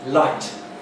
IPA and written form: laɪt (light)